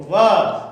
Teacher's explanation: तो व का दंतोष्ठ, जैसे ही आप बोलेंगे ना व, तो देखो बोल के देखिए, व तो ऊपर वाले आगे के दांत नीचे वाले ओष्ठ पे लगते हैं, तो व का उच्चारण स्थान होगा दंतोष्ठ।